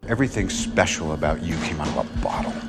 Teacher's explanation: The word came got linked to out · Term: connected speech